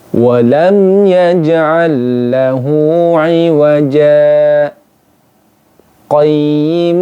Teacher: tanda sakta ini cara membacanya adalah dengan Berhenti sejenak sekedar satu Alif kemudian dilanjutkan